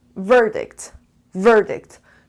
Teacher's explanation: 2 syllables and the stress is on the first syllable.